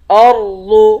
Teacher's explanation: را اور ضاد دونوں کو موٹا پڑھیں گے